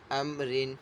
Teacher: میم ساکن کے بعد جو ہے با اور میم کے علاوہ حرف ہے یعنی را ہے تو یہاں پہ جو ہے اظہار شفوی ہوگا اور میم ساکن میں غنہ نہیں کریں گے۔ اور یہاں پہ را کو جو ہے باریک پڑھیں گے کیونکہ را کے نیچے دو زیر ہیں۔